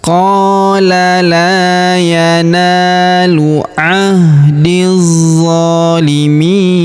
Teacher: Huruf mi kita panjangkan 2, 4 atau 6 harokat karena di depan huruf mi terdapat ia sukun sebelum huruf pemberhentian, dan huruf pemberhentian huruf na kita sukunkan atau kita matikan · Lalu kita panjangkan 2 harokat karena alif kecil di atasnya ya. Alif lamnya tidak dibaca karena ini alif lam syamsiyah ya. Alif bengkoknya atau alif maksorohnya tidak dibaca atau tidak dianggap ya. · Huruf di langsung sambung ke huruf za yang berharokat tasydid, langsung kita tahan dan kita tekan karena terdapat tanda tasydid di sini.